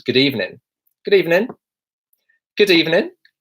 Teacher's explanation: you would kind of hear people dropping the G sound at the end of evening